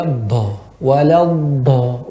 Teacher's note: Do merupakan huruf yang ya tertahannya udara, kebanyakan udara tertahan. · Hati-hati pada do, jangan ada udara yang keluar ya.